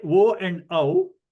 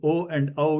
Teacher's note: they are gutturolabial, because while pronouncing O and O, you can see that your lips also participate. So it is coming from kanta and oshtau.